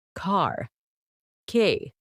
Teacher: Australian English. R sounds are softened or dropped.